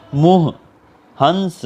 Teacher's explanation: इनको नाक से और मुंह से दोनों जगह से बोला जाता है। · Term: चंद्रबिंदु